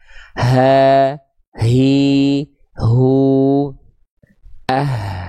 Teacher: H besar dilafalkan dari pangkal tenggorokan ya. Maka pastikan ketika melafalkan H besar bukan lagi dari dada ya, tapi dari tenggorokan bagian paling pangkal atau paling bawah.